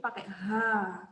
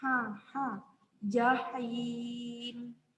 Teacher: Ha tipis, pangkal lidahnya naik.